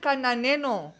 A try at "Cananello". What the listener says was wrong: You just add the N where it's supposed to be an L.